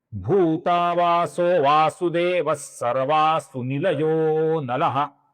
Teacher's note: विसर्ग का ओ हुआ है और फिर है अवग्रह चिन्ह जिसका हम लंबाई से उच्चारण करते हैं।